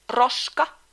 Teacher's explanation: In the proper pronunciation the tongue should shake very fast throughout not just from left or right side of the tongue. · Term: Finnish R